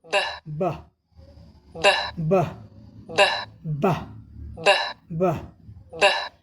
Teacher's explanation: ठीक है, ये ध्वनि का अभ्यास भी हम लोग बह बह बह बह, जैसे हिंदी के ध्वनि में भी हम लोग ब का उच्चारण करते हैं, तो हिंदी के ध्वनि के ब की अपेक्षा इसमें जो ब हम बोलते हैं, यह ब इसमें ज़्यादा और जो है टाइटली जो है चप कर दोनों होठ एक दूसरे से मिलते हैं, ये अंतर है।